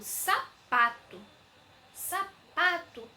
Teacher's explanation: o pa é a minha sílaba mais forte e ela é ela é a penúltima sílaba · paroxítonas são palavras que tenha penúltima sílaba como tônica ou seja a penúltima sílaba é a mais forte